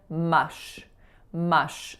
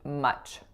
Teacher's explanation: there's a moment that there's no air passing through and then there's a moment where I'm hitting all the air out